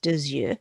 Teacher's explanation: So for two eyes, it's deux yeux. I'm going to pronounce that X because the vowel's coming next